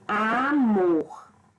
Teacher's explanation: Por exemplo, aqui, amor. Então, amor eu tenho como sílaba tônica a palavra mor, que eu pronuncio com mais intensidade